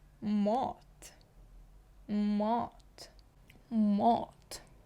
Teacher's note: мо Мот ви почули що я кажу не мат а Мот наче кажу А але більш наближено до о